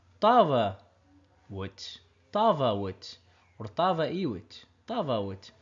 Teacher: For the Western dialect, we had a sub-dialect called Mlahso, which died out right now, which has died out, but we know that they pronounce the V. But today, Toroyo, which is the main sub-dialect of a Western dialect, doesn't use the V. So there's no vit, it's W.